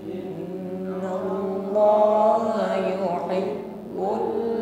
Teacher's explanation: Nun tasydid ataupun mim yang bertasydid ghunnah musyaddadah dengungkan ya, tingkatan ghunnahnya di sini akmal ya, dengungnya paling sempurna. Innallaha yuhibbu huruf ba yang ditasydid ditekan membacanya.